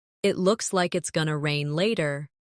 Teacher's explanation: It looks like it's going to rain later. In connected speech, going to becomes gonna.